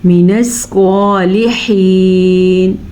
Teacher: سواد کو پر پڑھیں گے اور ہا کے مخرج کا دھیان رکھیں گے